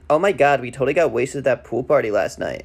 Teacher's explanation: they both upspeak at the end of their sentences, which linguists call high-rising terminal, or HRT. And I've looked, there's very little research into the origins of bro culture, but it does seem to have some roots in surfer culture, which might be that California connection to the Valley Girl accent.